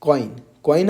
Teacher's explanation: कॉइन आप बोल रहे हैं तो ओ और इ की मिलीजुली आवाज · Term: ग्लाइडिंग वोवेल्स, Diphthongs